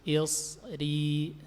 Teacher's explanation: Perhatikan shadnya isti'la, lidahnya naik, kemudian ri.